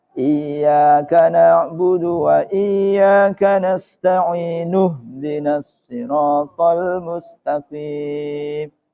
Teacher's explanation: Jadi hamzahnya adalah hamzah wasol. Ketika wasol, hamzah itu tidak terbaca. Dia berfungsi hanya ketika ibtida.